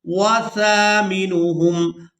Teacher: سا کو ہمیشہ ہی نرمی کے ساتھ ادا کریں۔ سا کی آواز میں سیٹی کی مثل آواز پیدا نہیں ہونی چاہیے۔